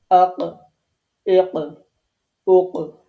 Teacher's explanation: আবারও দেখেন, আপনারা পিকচারটা দেখেন, এই যে জায়গাটা একেবারে জিহ্বার গোড়া, একেবারেই জিহ্বার গোড়া যে জায়গাটা, এই জায়গা থেকে অফ উচ্চারিত হয়। জিহ্বার গোড়াটা তার বরাবর উপরে তালুর সাথে লাগাইতে হবে। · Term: কফ